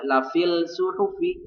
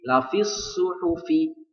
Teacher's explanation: tidak dibaca lafil suhufi ya, tetapi langsung diidghamkan kepada shad menjadi lafis suhufi. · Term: alif lam syamsiyah